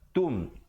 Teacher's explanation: Tum izhar syafawi, jangan dipanjangkan, sempurnakan bunyi tum terus masuk.